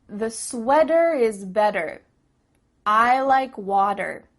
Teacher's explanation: In American English, a T that's between two vowel sounds, it doesn't always have to be a vowel, but between two vowel sounds is going to change to a D. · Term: change a T sound to a D sound